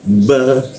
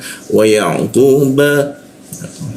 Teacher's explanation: ku ba, bibir bertemu bibir, wa ya ku ba